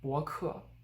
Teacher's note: 博客, fully pronouncing the fourth tone on 客.